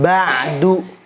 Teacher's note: Makhrajnya di ujung lidah tempelin ke pangkal gigi seri atas. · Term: dal